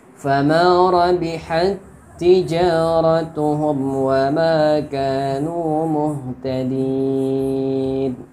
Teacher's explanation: Di sini ada tak sukun bertemu tak berharokat. Jadi tak sukunnya diidghamkan ke tak yang berharokat. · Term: idgham mutamassilain